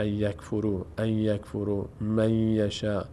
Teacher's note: من فضلهی فتحه بعدش الف صدای آ می‌گیره علی می اینجا نون بعدش یا ادغام میشه نون تبدیل میشه به یا